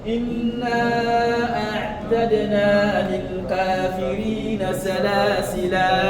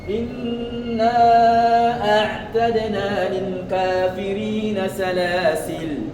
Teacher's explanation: On s'arrête sur ce mot-là en le prolongeant, le lam qui est à la fin, et ou en mettant soukoun sur le lam qui est à la fin.